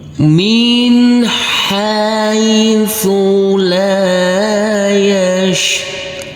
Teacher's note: kita baca selanjutnya untuk huruf ro dengan empat harakat